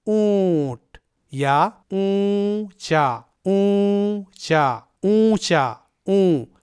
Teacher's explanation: تو اونچا میں یہ جو اون کی آواز ہے یا اونٹ میں یہ جو اون کی آواز ہے، یہ آواز آدھے نون کی ہے، اور اسی طرح آپ کو اخفا کرتے وقت اخفا کی آواز نکالنی ہے۔ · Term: آدھے نون کی آواز